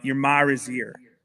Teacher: they actually add an R into the A